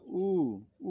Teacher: উ, দেখো জিভের পেছন দিকে আসে, এই জন্য পেছনে উঁচু হবে। আর উ যখন বলি তখন আমাদের ঠোঁটটা গোল হয়ে যায়, আর তখন অল্প পরিমাণে খুলে থাকে। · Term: উ স্বরধ্বনি